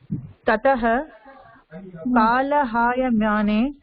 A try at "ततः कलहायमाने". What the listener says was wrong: कलह काल எங்கம்மா ஆக்கி மாற்ற கால இல்லையேம்மா